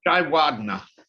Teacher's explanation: Equal stress on all the syllables.